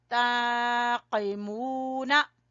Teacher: ताक़िमूना, कौफ को ज़बान की जड़ से, ताक़िमूना, मीम को खींचेंगे वाव मद्दा की वजह से